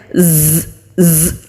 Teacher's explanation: जब हम ज को अदा करते हैं तो हमारे दांत आपस में मिलेंगे और जुबान की टिप नीचे वाले सामने के जो दो दांत है उनके मसूड़ों पर मजबूती के साथ टच करेंगे तो फिर बजिंग साउंड वाली आवाज आती है